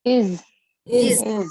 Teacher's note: though the word ends with S, alphabet S, the sound is of Z